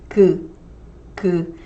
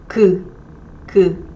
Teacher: The back of your tongue's kind of higher and touching the soft palate back here near your throat, and the tip of tongue is lower.